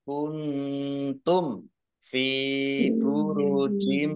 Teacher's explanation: Walau kuntum nun sukun bertemu dengan huruf ta bacaan ikhfa dibaca samar-samar. Mim sukun bertemu dengan huruf fa bacaan idhar safawi dibaca jelas.